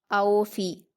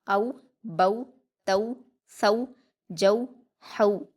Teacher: इसकी मारूफ आवाज़ होगी औ, बऊ, यानी ऊ जैसी आवाज़ आएगी लास्ट में, औ, बऊ, तऊ, सऊ, जऊ, हऊ, इस तरह से, ठीक है।